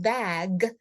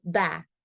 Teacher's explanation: a child is devoicing that Gus sounds like a k so in the word bag for example the G becomes a k and instead of saying bag that they would say back